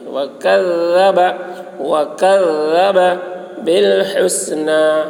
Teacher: کاف کی آواز باریک ہوگی، الذال کی آواز بھی باریک ہوگی